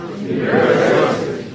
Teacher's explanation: the T is a flat T, so it sounds like a D.